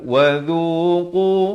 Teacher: Qaf ni makhrajnya di pangkal lidah